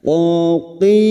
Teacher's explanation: Huruf qaf ini huruf isti'la, huruf yang dibaca tebal. Jangan samakan dengan kaf, ya.